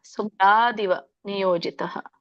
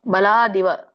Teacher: ದೀರ್ಘ ಇಲ್ಲ ದಿ ಕಡೆ